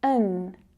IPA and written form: ən (an)